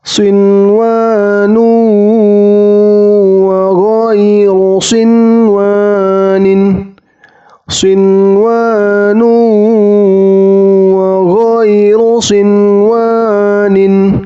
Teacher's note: Dan ini juga nun sukun bertemu wawnya harus jelas, nunnya tidak boleh didengungkan atau dipanjangkan 2 atau 3 harokat.